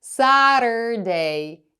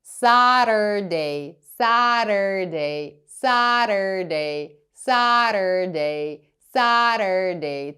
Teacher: Friday субота Saturday Або можна сказати Saturday щоб сказати правильно Saturday вам потрібно язичком проскочити по найвипуклішій частині верхніх Ясон дуже швидко Saturday і на R перейти